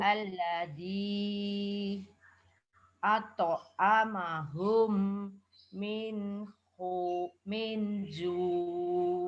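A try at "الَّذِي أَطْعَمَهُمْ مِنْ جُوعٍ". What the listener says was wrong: Nah, ini jangan diputus. At'amahum min ju. Agak lama hum. Terus min ju ngoten. Butuh nafas diatur sejak awal.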